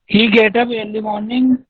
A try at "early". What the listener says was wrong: उच्चारण ठीक करो अपने. ईयरली नहीं होता है, अर्ली होता है. प्रोनाउंसिएशन ठीक करो.